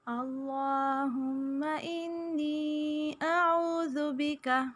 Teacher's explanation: اس میں جلالہ کے لام سے پہلے زبر یا پیش ہو تو ہم اسے پر پڑھتے ہیں. ہم کے میم پہ غنہ کریں گے، ناک میں آواز کو چھپائیں گے. انی نون پہ غنہ کریں گے اور نی جائے مدہ ہے یا ساکن سے پہلے زیر، اس لیے الف کے برابر اسے کھینچیں گے.